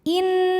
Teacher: Kemudian ada hukum gunnah musyaddadah karena nun bertasydid. Cara bacanya dengung, bunyi n-nya tahan sampai ada suara masuk hidung kurang lebih 2 harokat.